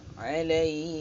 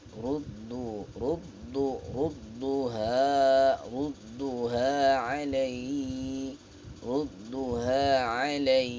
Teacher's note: awalnya rendah, kemudian dia agak naik, dihentak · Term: hentakan suara